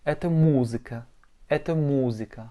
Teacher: Et pour écrire musica, M, O, Z, I, K, A, avec un accent tonique sur le U.